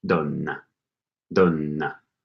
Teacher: Like an N sound and then a stronger N sound.